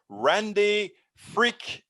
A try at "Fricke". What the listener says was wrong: Real close, Fricke. I pronounce the E on the end.